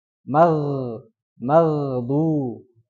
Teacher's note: di kata mag ya Jadi yang harusnya dibacanya rikhwah ya kan Gin itu sifatnya rikhwah atau rakhwah itu suara yang mengalir